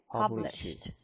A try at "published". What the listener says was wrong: Published. Published. It's not published. So you have to omit id sound, okay? just produce t sound. Published.